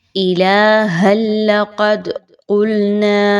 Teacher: آپ نے ہا کی 2 زبر کو ڈائریکٹ لام کے ساتھ ملانا ہے